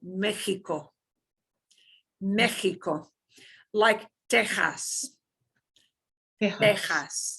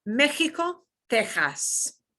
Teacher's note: Sometimes though, it's just like that H sound, like Mexico, Mexico, like Texas, Texas. Yeah, that throaty H.